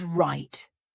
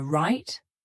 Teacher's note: when I said that my tongue was stopped at the top of my mouth that's why we call it a stopped T